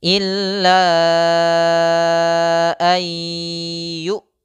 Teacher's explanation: Huruf nun disisipkan ke dalam huruf ya, sehingga bunyi nun menghilang, kita menggantinya dengan ya, lalu kita tambahkan ghunah. Kita memegang ghunah, itulah sebabnya disebut idgham bighunah karena disertai dengan ghunah, disertai dengan memegang: "illa ay yu", kata "yu" dipotong. · Kemudian ada nun mati bertemu dengan ya, ini idgham bi gunnah. Nun dimasukkan ke huruf ya sehingga nun suara nunnya hilang, kita ganti dengan ya kemudian kita gunnahkan. Gunnah itu kita tahankan.